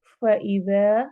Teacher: ज़ाल को नरमी से पढ़ना है और अलिफ मद्दा करनी है।